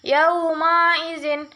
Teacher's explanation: mad lain karena ada tanda baca fathah bertemu dengan huruf waw mati. Cara membacanya sekedar lunak dan lemas.